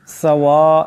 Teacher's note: এখানে সিনের উপর মদ আছে এটাকে অবশ্যই লম্বা করে পড়তে হবে